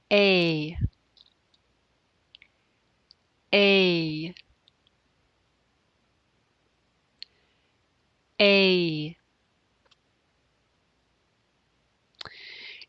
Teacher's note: the a sound moves into the e sound as in bit to do this the jaw lifts and the front part of the tongue curls towards the roof of the mouth